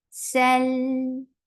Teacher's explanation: Lam will get sifa of tawassut, and tawassut is a medium flow of sound.